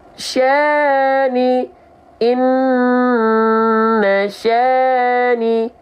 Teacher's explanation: Dalam ayat contohnya adalah fathah ketemu sama alif, dibaca 2 harokat. 2 harokatnya harus konsisten. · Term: mad tabi'i